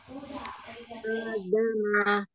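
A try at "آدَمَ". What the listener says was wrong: Ulang, ma-nya tidak boleh panjang. A-nya tidak boleh diangkat. A huruf tipis apa tebal? Adama. Tipis semua.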